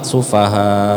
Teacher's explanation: Sufa tadi kurang panjang Kayaknya sufaha gitu ya diperpanjang lagi